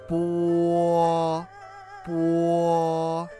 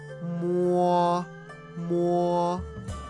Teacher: When O is after B, P, M, F, sound U is inserted before O.